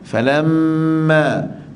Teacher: Falamma, fa lemut, la lemut, mim kita kena baca lemut juga, tapi jangan lemut terus, kita kena dengung 2 harakat sebab mim itu ada sabdu. Falamma, panjang mim tu kadar dengung dia 2 harakat, panjang ma pula 2 harakat sebab sama dengan mim.